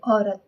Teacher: ठीक है, ओ यानी ओ को थोड़ा फैला कर बोल रहे हैं। ओ यानी थोड़ा बल लगाकर, समय भी लग रहा है ओ बोलने में